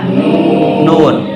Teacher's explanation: جب ہم سرے زبان کو تالو سے لگاتے ہیں، وہ مسوڑے کے اوپر والے تالو سے، تو ہمارا ادا ہوتا ہے نون